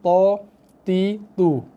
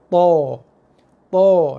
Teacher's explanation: Bila sebut to tu bunyi bacaan dia meninggi. So akan memastikan pangkal lidah kita akan naik lebih tinggi. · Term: sifat meninggi